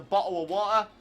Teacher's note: people from the uk brits english people especially don't pronounce their t's